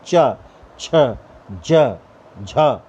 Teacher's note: जीभ जो है वो तालु के अग्रिम भाग से टकराती है, रगड़ खाती है · इनके उच्चारण के समय जीभ के अगले भाग का तालु के साथ स्पर्श होता है, स्पर्श संघर्ष होता है। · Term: स्पर्श संघर्षी व्यंजन